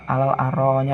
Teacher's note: di ayat yang berikutnya di situ terdapat hukum bacaan mat wajib mutasil yang dikarenakan adanya mat tabi'i bertemu dengan huruf hamzah pada satu kalimat dan dibaca panjang 5 harokat